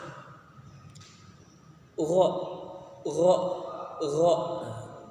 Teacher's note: Makharijul huruf dari gha yaitu ujung tenggorokan yang paling dekat dengan lidah.